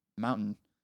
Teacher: if you think about the word Mountain I don't really say the T I don't think that's that's just an American thing right um